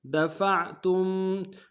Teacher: تا کو میم ساکن کے سامنے لانا، غنہ کریں گے